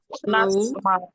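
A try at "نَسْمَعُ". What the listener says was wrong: এত স্লো বলা যাবে না, তাতেই বলতে পারি।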